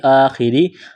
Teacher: زیر خی آخی، خا کو موٹا کرنا ہے، را زیری آخری، را کو باریک کرنا ہے، زیر کی وجہ سے